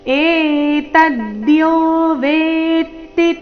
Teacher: ವೇತಿ ವೇತಿ ಇದೆ ವೇತಿ ಇಲ್ಲ ವೇತಿ ತ ಕ್ಕೆ ತ ದು ಒತ್ತು ವೇ ಮೇಲೆ ನೈಸರ್ಗಿಕವಾಗಿ ಆಘಾತ ಬರುತ್ತೆ